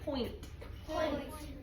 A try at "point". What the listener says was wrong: I want to hear all of the sounds separately, so I should not hear nt. I should hear separate.